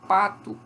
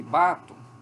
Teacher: apenas o traço surdo do P em relação ao traço sonoro do B · O P é bilabial, é oclusivo e é surdo, o P. O B é bilabial, é oclusivo, só que é sonoro.